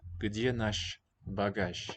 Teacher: That's basically voiceless sh, and this one is normally voiced j, but at the end of a word, gonna be sh as well